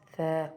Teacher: Ensuite, troisième mot, on reconnaît le tha avec la fetha, le alif, donc on sait que c'est la voyelle longue en a. Donc là, on prononce tha, on reste un peu plus longtemps dessus